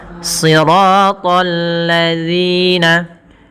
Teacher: Kemudian bertemu dengan alif lam. Di sini ada alif lam syamsiyah pada lafal alladzina, yang dimana lamnya harus tipis karena sifat lam itu tipis.